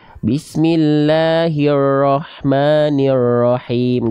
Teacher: huruf ro itu getarannya enggak boleh banyak-banyak tapi bukan juga berarti huruf ro dilafalkan dengan getaran yang hilang jadi kayak orang bule cadel eh bukan cadel Maaf kayak orang bule Bismillahirrahmanirrahim Enggak gitu